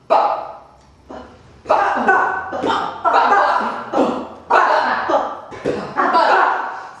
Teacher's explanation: So we'll start with the lips. So pressing the lips together, and then let the kind of air explode out with the voice behind it.